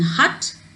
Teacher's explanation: is a central open unrounded